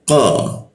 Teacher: lidahnya kita naikkan sehingga qo itu tidak ada hembusan udaranya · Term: huruf qo